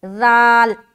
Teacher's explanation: اسی طریقے سے جب ہم زال ادا کرتے تو زال میں ٹچ ہوتا ہے، زبان جو دانتوں کی جڑ ہے اوپر وہاں پر زبان کی نوک ٹچ ہوگا